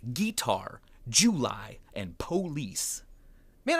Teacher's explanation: emphasizing the first syllable of words like guitar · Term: Southern draw